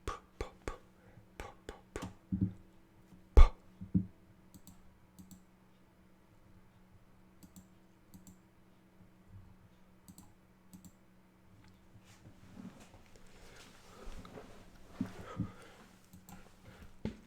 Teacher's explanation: P sound has no voice. There's no vibration. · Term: voiceless sound